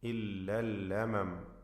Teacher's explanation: ലമം എന്നവിടെ വഖഫ് ചെയ്യുമ്പോൾ കൂടുതൽ മണിച്ചുകൊണ്ടുള്ള ശബ്ദം വരരുത്.